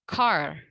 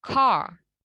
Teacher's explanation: Jadi R-nya itu tidak dibaca dengan jelas. Car. Kemudian, ini dalam American English ya, kata yang kedua kita ucapkan dengan R-nya terdengar.